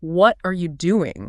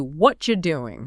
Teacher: a native speaker mechanically blends that together into a single cluster. They drop the hard consonants and link the syllables using their breath. It physically morphs into what you doing.